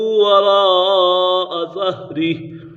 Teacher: حرف مدہ کے بعد حمزہ اسی کلمے میں ہے تو مد متصل ہوگا